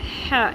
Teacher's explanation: یہ حلوے والی ہا جو ہے اردو میں وہ عربک میں ہا ہوتی ہے، سانس کی آواز آئے گی، ہے اس کو نہیں پروناؤنس کرنا.